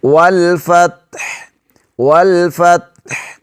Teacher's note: والفتح، ایسی آواز کو نہیں روکنا تا پر، بلکہ ہا کی آواز بھی حلق کے درمیانی حصے سے نکالیں گے۔ والفتح، والفتح، اور لام پر قلقلہ نہیں کریں گے، وال ایسے نہیں کریں گے۔